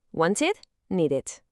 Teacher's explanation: La regla es, si el verbo termina en sonido de t o de d, como want o need, el ed se pronuncia como una sílaba aparte, id